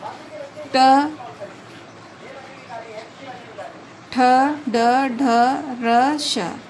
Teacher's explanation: इनको मूर्धन्य व्यंजन बोलते हैं क्योंकि वायु मुख के अंदर की छत के अगले भाग से टकराती हुई निकलती है